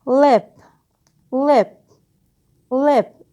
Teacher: When it occurs at the beginning of the word lip, lip, lip, it's the clear l sound.